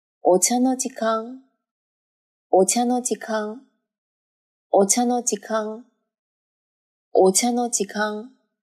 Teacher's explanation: お茶の時間连在一起就一直读成了一个高音